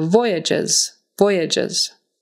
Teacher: This time the accent is on the first syllable, and again that G on the end there is pronounced like a J, and the S is going to be pronounced like a Z